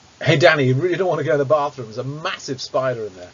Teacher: the next word that was stressed was massive and I said that quite slowly I put a lot of stress on their word saying massive · so I think the first word I stressed was Danny · and obviously I stressed the word spider